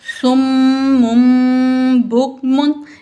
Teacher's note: اب یہاں پہ 2 بار غنہ ہوگا، ایک تو یہ میم مشدد ہے، میم کا غنہ ہوگا